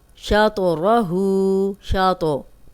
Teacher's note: तो पे जज़म है हिला के पढ़ें। शातरहु, कलकला है।